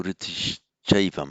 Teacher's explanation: At one point, just note here for the sandhi, we've got the visarga there, followed by a cha there, and visarga followed by a cha, it becomes a sh, so riddhischaivam.